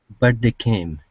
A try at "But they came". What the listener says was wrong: Okay, open your mouth up just a little bit more. Instead of leaving it closed, but. Okay, but they came.